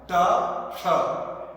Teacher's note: ट बोलते वक्त आपकी जीवा जहां टकरा रही है ट, वही जीवा टकरा के श बोलना है। ट श, वो तालव्य श कहलाएगा।